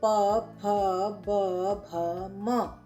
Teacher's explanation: पव के वर्णों का उच्चारण हम ओष स्थान से यानी कि होठों से करते हैं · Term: प वर्ग